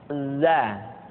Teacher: huruf Za diucapkan dengan cara ujung lidah kita berada di antara dua gigi seri bagian atas dan bagian bawah